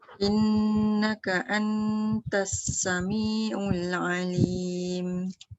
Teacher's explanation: Innaka antas, nun bertemu ta dengung.